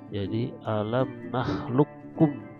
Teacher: Tapi kita bacanya seperti seolah-olah qafnya tidak ada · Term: idgham mutaqaribain